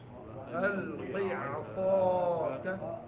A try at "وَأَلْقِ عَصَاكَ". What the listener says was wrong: جی عصا بہت زیادہ موٹا نہیں کرنا ہے، وَأَلْقِ عَصَاكَ، صاد میں سیٹی نکالنی ہے،